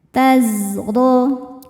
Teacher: salah satu sifatnya sofir ya, berdesis seperti lebah.